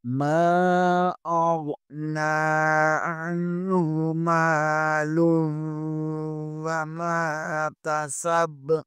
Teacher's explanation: ما اغنى عنه ماله، یہاں پر بھی میم کے بعد حروف مدہ میں سے الف آ رہا ہے، اسے بھی تھوڑا سا کھینچیں گے. آگے ہا کے اوپر الٹا پیش ہے، اسے بھی ایک الف کے برابر کھینچ کر پڑھیں گے